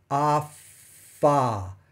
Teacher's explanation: Notice that the vibration in the ah is there. It turns off for the F and back on for the ah. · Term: voicing